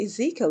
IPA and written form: ɪˈziːkiəl (Ezekiel)